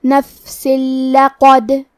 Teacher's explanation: لام حروف الادغام بغیر غنہ میں سے ہے اور ادغام کا معنی ہے حرف کو حرف میں داخل کرنا. تو ہم یہ تنوین کو لام میں ملا کے بغیر غنہ سے لیکن تشدید کے ساتھ یہ حکم کو ادا کریں گے